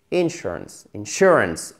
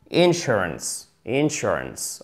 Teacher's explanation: Accent tonique, c'est la deuxième syllabe et pas la première.